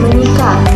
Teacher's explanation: Umpamanya dalam pengimbuhan awalan me pada kata dasar sikat, maka fonem S pada kata sikat itu diluluhkan dan disenyawakan, atau bisa dikatakan digantikan dengan fonem nasalnya yang ada pada awalan me itu. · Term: peluluhan fonem